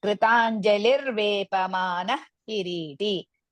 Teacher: Ki is the only letter which is Hraswa, ri and ti, both aksharas are dirgha.